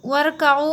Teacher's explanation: वरकाऊ में देखिए वाव को मिला दिया हमने रा में, अलिफ़ को हमें नहीं पढ़ना होगा, वर पढ़ेंगे, वाव रा ज़बर वर।